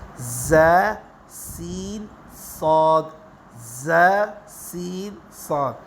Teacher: اسی طرح اگلے جو 3 حروف ہیں یہ سیٹی والے حروف ہیں، اس میں سیٹی جیسی سختی کی آواز ہے،